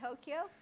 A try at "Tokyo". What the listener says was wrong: Tokyo. Tokyo. It's 2 syllables, not 3. Tokyo, not Tokyo.